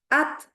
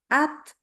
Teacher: ada sifat yang dinamakan sebagai Hames atau keluar hembusan udara ketika kita baca